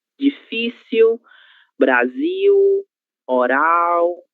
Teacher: a letra L, se não estiver seguida de nenhuma vogal, ela será pronunciada como se fosse a letra U